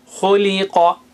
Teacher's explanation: Kho is high sounding, qa is high sounding.